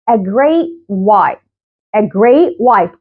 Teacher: don't pronounce the T. او بعمل لها stop وما بطلعش الهواء.